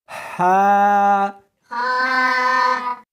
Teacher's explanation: اس حرف کو سختی کے ساتھ ادا کریں گے. جیم اس کو حلق میں سے نکالنا ہے اور ساتھ میں ہوا بھی ہونی چاہیے